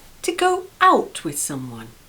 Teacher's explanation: Notice the stress is on the preposition out